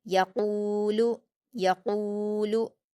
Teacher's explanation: क़ाफ पर वाव मद्दा है, 2 हरकत खींचकर पुर पढ़ेंगे, लाम पर हरकत जल्दी पढ़ेंगे।